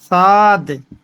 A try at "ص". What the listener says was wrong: اور موٹا کیجیے صاد.